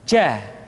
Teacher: Kesalahan yang sering muncul ketika mengucapkan huruf ja adalah mengalirnya nafas. Jaa, ada nafas yang mengalir.